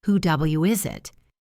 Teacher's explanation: The word who ends in an O sound. The word starts with a vowel, so we connect them with a W. Who W is it? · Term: W link